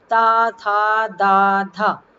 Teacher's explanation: दंतव्य होते हैं जो जिनमें हमारी जीभ की नोक ऊपर वाले आगे वाले दांतों को जब टच करती है या छूती है जाकर के